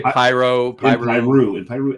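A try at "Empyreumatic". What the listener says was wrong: There's an EU in there. Empyrumatic.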